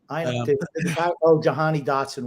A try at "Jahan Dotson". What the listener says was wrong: Jahan Dotson, not Jahani.